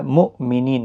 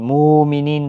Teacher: حمزہ ساکن کو جھٹکی کے ساتھ پڑھا جائے گا۔ مؤمنین، مومنین نہیں پڑھنا ہے، غلط ہو جائے گا۔